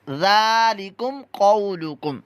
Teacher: ذال جو پہلا آ رہا ہے ذا یہاں پر زا کی آواز نہ ہے ورنہ لحن جری بن جائے گی آپ کی اور حرام گناہ